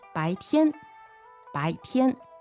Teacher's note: So 白 天, that's second tone, first tone. 没 错， 第 二 声 和 第 一 声， 白 天， 白 天。